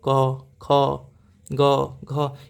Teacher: ये सभी कंठ से बोले जाते हैं आप बोल के देखो क ख ग घ ये सभी जो है आपके कंठ से बोले जाएंगे